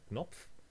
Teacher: in German, you can have K and N as an onset, as in Knopf, button, but you cannot have that one as a valid onset of English, for example.